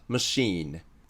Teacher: フランス語由来の単語だと▁CH▁はよく▁sh▁って読みます